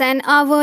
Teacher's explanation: H is silent in hour and it is pronounced with a vowel sound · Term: silent H